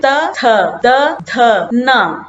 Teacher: त वर्ग से हम जो शब्द निकलते हैं जो ध्वनि निकलती है वो दांतों को स्पर्श करते हुए निकलती है। अब देखिए त थ द ध न आप कोशिश करिए ये जो ध्वनि निकल रही है ये तुम्हारे दांतों का स्पर्श करते हुए बाहर निकल रही है।